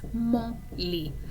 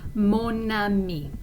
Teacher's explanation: when we have it in front of a masculine noun like lit, there is not a liaison.